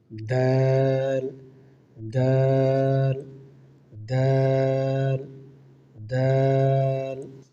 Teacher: প্রথম হচ্ছে দাল। দাল হচ্ছে জিহ্বার আগা, সামনে উপরে দুই দাঁতের গোড়ার সাথে লাগাইয়া।